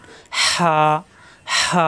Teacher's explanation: যা জি জু, এটা হা, কোনো নক্তা নাই, হা, নক্তা নাই, হা। কণ্ঠনালীর মাঝখানে চাপ দিয়ে উচ্চারণ। হা, হা, গরম বাতাস বের হবে।